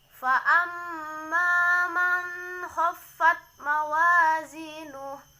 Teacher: huruf nun mati bertemu dengan huruf kho. Ini hukum bacaan idhar, cara membacanya jelas. · mim bertasjid, cara membacanya ditekan dan ditahan 2 harokat